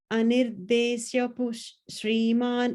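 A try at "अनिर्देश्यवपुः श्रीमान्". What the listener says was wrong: I think that Vapu is not coming clearly. Anirdeshya Vapush Shriman.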